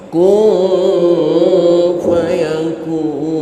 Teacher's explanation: Kun fayakun, jangan juga dijadikan ang kun fayakun, tidak. Ini ikhfa ausat, suaranya m.